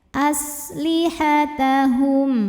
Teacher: sinnya desis punya sifat namanya shfir